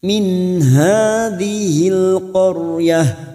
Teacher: Rijna min, nun sukun bertemu ha idhar halqi. Nun sukun atau tanwin yang bertemu dengan 6 huruf ini termasuk huruf ha, min ha, dibaca jelas tanpa mendengung, namanya bacaan idhar halqi.